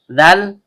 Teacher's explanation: ujung lidah bertemu dengan ujung gigi seri atas. Karena dalnya berharokat kasroh diikuti ya sukun yang keluar dari tengah lidah naik memantul ke langit-langit, maka seharusnya terjadi mad tabi'i.